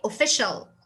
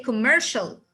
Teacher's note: i will pronounce c and i in this situation i will pronounce them as sha